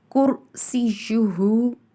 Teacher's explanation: را کو پر پڑھا جائے گا اور یا مشدد ہے اس لیے اس کو بھی شدت سے ادا کیا جائے گا